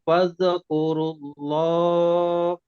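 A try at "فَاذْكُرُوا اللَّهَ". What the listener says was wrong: Fazkurunya masih ada mantul. Fazkuru. Tahan lidahnya ditahan supaya tidak mantul.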